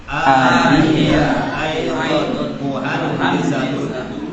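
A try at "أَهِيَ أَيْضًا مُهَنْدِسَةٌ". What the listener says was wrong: Ah ya, hamzahnya pendek ya, qasir, fa naqra'uha ahiya. Ahiya aidon muhandisatun.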